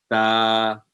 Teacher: ज़बान की नोक को सामने वाले ऊपर के 2 दांतों को लगे तो ये हर्फ अदा होता है, ता। इसी तरह सा, ये जो जब इस लफ्ज़ को अदा करते हैं तो ज़बान की नोक को सामने वाले ऊपर के 2 दांतों को नरमी से लगाएं तो ये हर्फ अदा होता है, सा।